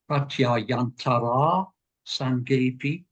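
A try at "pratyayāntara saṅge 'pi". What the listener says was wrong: Say that with all of your effort to get these few syllables right, you actually then fell into the trap of over-lengthening the final a. Pratyayantara, pratyayantara sange.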